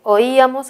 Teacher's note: En oíamos hay hiato acentual entre la O y la I, ya que son sílabas diferentes y la que suena más es la I.